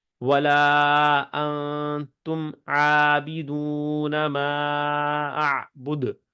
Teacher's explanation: اور آخری دال پہ ہم نے قلقلہ کیا ہے